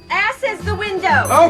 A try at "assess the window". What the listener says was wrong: It's assess the window, not ass is the window. You put the wrong emphasis on the wrong syllable.